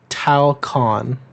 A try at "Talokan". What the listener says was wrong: Talcon? No. No, there's another T in there. Oh, it is Talokan.